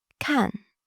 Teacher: The first 看 (kàn) is fourth tone, so your voice drops sharply.